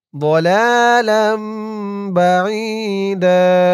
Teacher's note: দুই জবর থেকে এক জবরকে বাদ দিয়ে এক জবর দিয়ে এক আলিফ টান দিয়ে পড়তে হবে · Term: এওয়াজ